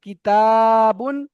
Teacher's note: এখানে তাটা আলিম মাদ্দা, তাহলে টান হবে কিতাবুন